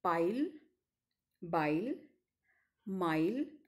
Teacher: the initial sounds in the english words pile by mile are bilabial sounds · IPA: [p], [b], and [m]